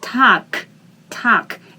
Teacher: in the end, g is transformed into k